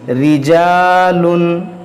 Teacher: यहाँ पर देखें रा पर ज़ेर है, इस रा को बारीक पढ़ेंगे।